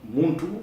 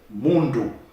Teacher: the T and the D are the same phoneme, the same sound. In fact, one is deaf and the other is sonorous. Okay, but instead of saying Muntu, we could say Mundu.